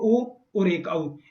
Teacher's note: नीचे अनुवाद में देखें आप 8 नंबर में लिखा है ओकार और औकार, तो एक तो ओ और एक औ, इन दोनों का उच्चारण स्थान हुआ कंठ और ओष्ठ, कंठोष्ठम।